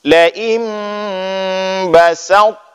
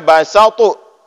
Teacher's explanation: ketika kita sukunkan to tetap dengan bunyi to, tapi jangan ada qalqalah. Laim basaut, ya, jangan dibaca basautu, tetap basaut, tetap tebal.